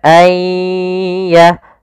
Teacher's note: kita tahan disertai dengan gunnah. Gunnah itu menahan, dengung. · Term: idgham bi gunnah